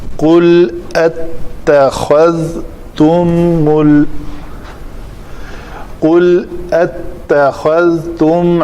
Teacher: تا پتلے حروف میں سے ہے، ذال بھی پتلے حروف میں سے ہے، اور خا جو ہے یہ موٹے حروف میں سے ہے۔ خذ صدقتن قذ حروف مستعلیہ 7 ہیں، تو یہ بڑی مہارت سے تا کو پتلا اور ذال کو پتلا رکھ کے بیچ میں خا کو موٹا پڑھنا ہے۔